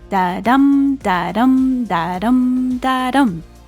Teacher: The softer ones are unstressed syllables. In these lines, we have a pattern that sounds like da-dum, da-dum, da-dum, da-dum. That's a common meter called iambic